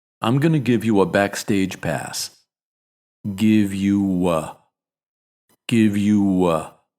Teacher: after ooh we throw a little W sound in there to make it easier to transition